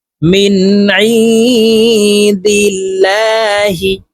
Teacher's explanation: সাকিনের পরে ইকফার 15 টি হরফের ভিতরে যেকোনো একটি হরফ আসলেই নুন সাকিনকে গুন্নার সহিত নাকের ভিতরে লুকাইয়া পড়িতে হয় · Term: ইকফা গুন্না